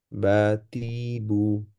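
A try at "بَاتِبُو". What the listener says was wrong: বা প্রথম বাটা একটু টান হয়ে যাচ্ছে, হ্যাঁ, বাতিবু।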